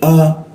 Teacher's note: bukan a di depan mulutnya ini tapi di bawah tenggorokan